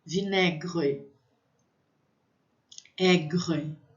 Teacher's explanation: esse R é como se eu estivesse fazendo um gargarejo com a minha garganta.